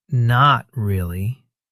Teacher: with a flat, dry tone, it can sound a little sarcastic, like you're not impressed.